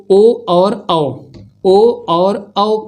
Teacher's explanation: ओ और औ का उच्चारण कंठ ओष्ठ से मतलब कंठ और ओष्ठ का संयुक्त रूप करने पर कंठो ओ औक बोला जाता है। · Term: कंठोष्ठ